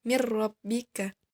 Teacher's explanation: maka dibaca idgham secara sempurna tanpa disertai dengung. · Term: idgham bila gunnah